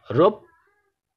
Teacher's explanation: পয়ের সাথে জফলা যুক্ত ছিল, তাই এই প দুইবার উচ্চারিত হচ্ছে